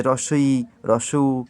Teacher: তো এগুলো আমরা উচ্চারণ করবার প্র্যাকটিস করব, যে হ্রস্ব ই, হ্রস্ব উ, এগুলো উচ্চারণের সময় একটু কল্পনা করব যে হ্রস্ব ই, হ্রস্ব উ উচ্চারণ করার সময় ঠোঁটের পরিমাণটা সবচেয়ে কম পরিমাণ খুলছে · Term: সংবৃত